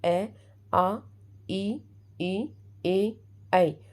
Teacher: बोलकर देखना होठ गोल नहीं होते